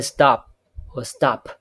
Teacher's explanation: The p sound can be unaspirated. However, you can say stop with the aspiration at the end of the p sound